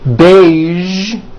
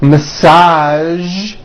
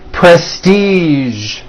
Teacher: there are only a few words that have the voiced zh sound at the end. A few of these words are the color beige, the word massage, and the word prestige.